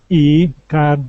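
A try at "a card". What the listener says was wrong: Now this would be pronounced A. Instead of E, A.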